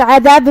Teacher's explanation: کلمت عذاب میں یہاں حرف العین کو ہم حلق کے درمیان والے حصے سے ادا کریں گے. آخری میں با پہ پیش ہے تو اس کا دھیان رہے.